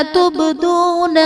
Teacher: تبدون میں با حرف قلقلہ ساکن ہے، یہاں پر قلقلہ خوب ظاہر کریں گے۔